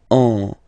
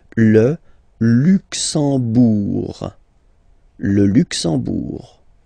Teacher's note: You don't pronounce the M at all, it's this nasal en